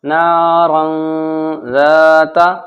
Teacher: اخفا، ناک میں تھوڑی دیر آواز چھپے گی۔ نارا ذات، تنوین کے بعد زال آ گیا حروف اخفا میں سے، تو غنہ ہوگا، ناک میں آواز چھپے گی